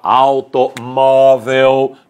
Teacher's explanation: Você comprou um automóvel, olha lá, automóvel, palavra terminada em L, a penúltima sílaba é a mais forte, por isso o acento agudo.